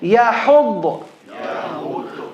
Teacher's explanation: The ha comes from the middle of the throat.